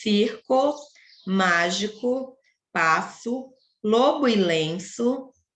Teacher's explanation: o O tem som de U